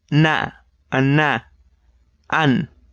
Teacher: tip of the tongue on the alveolar ridge, expel air with your nose and vibrate your vocal cords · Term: alveolar nasal